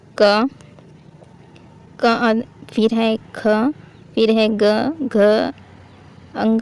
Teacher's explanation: ये बोले कहां से जाते हैं तो ये बोले जाते हैं कंठ से